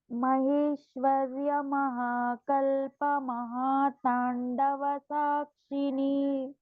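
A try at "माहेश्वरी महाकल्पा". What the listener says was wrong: So there is no Maheshwarya there. It is Maheshwara Mahakalpa.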